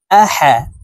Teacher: হরফকে হলুকের মধ্যখান থেকে উচ্চারণ করব কারণ হার মাখরাজ হলুকের মধ্যখান থেকে হবে